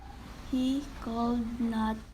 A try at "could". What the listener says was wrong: Could is mispronounced as cold.